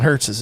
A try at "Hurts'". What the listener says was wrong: I don't think it needs it's just Jalen Hurts. not Hurts is. You just say the S. You don't add an extra S. It's S apostrophe, but you pronounce it Hurts.